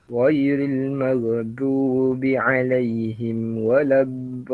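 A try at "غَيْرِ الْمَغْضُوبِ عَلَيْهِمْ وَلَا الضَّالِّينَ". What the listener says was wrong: Maghdu dia bukan maghdu tak, dia tak melompat macam itulah. Dia maghdu tertahan. Dia kita maghdu gitu. Nanti perbaik lagi pada huruf ghain dan juga dad lah. Dad waladha.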